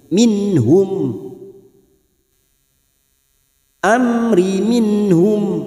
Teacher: nun sukun bertemu ha, idhar halki, dibaca jelas tanpa mendengung